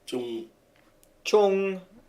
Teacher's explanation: This may be treated as a J, like in English jam, but it is more like a cross between a J and a Z.